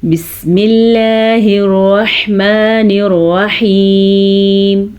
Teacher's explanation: اللہ کا نام باریک ہے کیونکہ اللہ کے نام سے پہلے زیر ہے۔